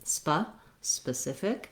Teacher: and it's actually a vowel schwa it sounds like a so being very short on that first syllable will help you